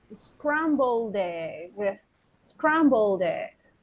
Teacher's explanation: What is the last sound? D. Scrambled. D. So can we link it with the vowel?